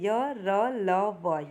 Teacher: इसको बोलने में स्वरों से ज़्यादा समय लगता है और व्यंजन से कम समय लगता है, इसलिए इसे हम अर्ध स्वर भी कहते हैं।